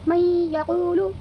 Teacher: نون ساکن جو ہے اس کی آواز کو یا میں بدل دیں گے اور تھوڑا غنہ کے ساتھ ناک میں لے جا کر کے ادا کریں گے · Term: ادغام ناقص